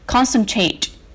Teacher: This word is stressed on the first syllable.